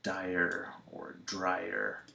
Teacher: long I plus tongue curl